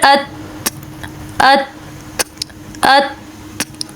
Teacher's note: حمزہ تا زبر ات ات ات، جب ہم نے اس کی مکمل ادائیگی کی تو ہمیں پتہ چلا کہ پہلے ان کے اندر صفت شدت آئی اور پھر بعد میں ان کے اندر صفت ہمس آئی